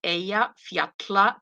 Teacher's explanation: the Double L is like like a TL but then you have air coming like through the sides of your mouth